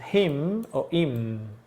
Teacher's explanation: está en la forma débil, pierde la H, el sonido de la H.